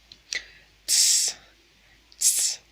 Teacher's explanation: Y por último tenemos TS, ts. Es una consonante africada y alveolar. Es como si pronunciáramos s y repentinamente pegamos la lengua a los incisivos superiores.